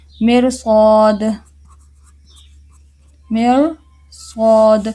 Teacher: را ساکن سے پہلے تو زیر ہے لیکن را ساکن کے بعد حروف مستعلیہ میں سے صاد آ گیا، تو اس کو کیا کریں گے، موٹا کریں گے